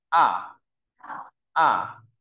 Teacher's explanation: có độ cao là 51 mình sẽ đọc từ cao nhất đọc mạnh đ thấp nhất này à À rồi ta đọc to chữ